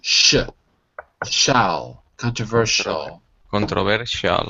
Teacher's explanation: you don't actually pronounce the i the SI is exactly like SH